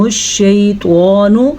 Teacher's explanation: توا کو ہم نے پر پڑھنا ہے کیونکہ توا حروف مستعلیہ میں سے ہے